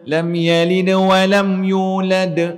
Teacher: Kalau huruf qalqalah yang berhenti dan pada waktu dia berhenti tu dia memang mati. Lantunan dia tak sekuat huruf yang ada baris. Jelas tak? Huruf dal dia sukun.